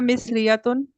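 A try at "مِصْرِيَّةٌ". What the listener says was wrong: मिस्री या तो नहीं है, मिस, यहाँ पे आपकी साउंड स्ट्रेस होगी। अगर यहाँ पे आप अपनी साउंड अगर यहाँ पे आप अपनी साउंड स्ट्रेस नहीं करते, तो इसका मतलब ये है कि आप नेशनैलिटी आप नहीं बता रहे थे।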